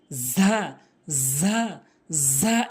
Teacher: এরপরে আসুন যা ভুল উচ্চারণ, যা ভুল উচ্চারণ, সঠিক উচ্চারণ হচ্ছে ঝা, ঝা, ঝা। অর্থাৎ জিহ্বার আগাটা উপরে নিচে দুইটি দাঁতের মাঝখানে লাগাবেন, ভালো করে বুঝবেন, জিহ্বার আগা উপরে নিচে দুইটি দাঁতের মাঝখানে দুটি দাঁতের আগাতে ঝা ঝা ঝা এভাবে উচ্চারণ করবেন।